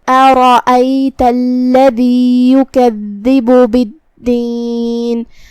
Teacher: ہم حمزہ کو ظاہر کریں گے اور اسے حلق کے نیچے والے حصے سے ادا کریں گے جو کہ اس پہ زبر ہے تو اس کا دھیان رہے. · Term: حمزۃ قطع